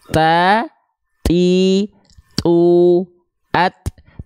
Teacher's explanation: maka ketika huruf ta dilfalkan cukup dia dipercikan saja nafasnya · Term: syiddah, percikan nafas